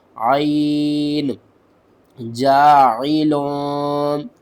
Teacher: جاعلوکا، جیم الف زبر جا، عین زیر عی، جاعی، لام 2 پیش لوں، جاعلون، عین کو آپ نے حلق کے درمیان والے حصے سے ادا کرنا ہے